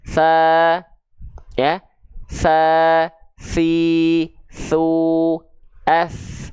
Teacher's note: kalau huruf sa, dia mengalir suara plus dia juga sifatnya adalah hams, bukan jahar. Hams itu artinya mengalir nafas.